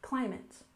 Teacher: there is a stress on the first syllable in climate